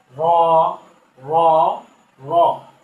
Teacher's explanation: জিহ্বার আগার উল্টো পিঠ তার বরাবর উপরের তালুর সঙ্গে লাগাই